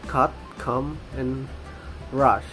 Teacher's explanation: This is a central vowel, and the diagram shows that it is more open than the open mid tongue height.